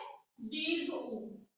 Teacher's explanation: वृत्तामुखी है, और इसका भी उच्चारण स्थान ओष्ठ है, इसलिए इसे भी क्या कहेंगे, ओष्ठ स्वर कहेंगे।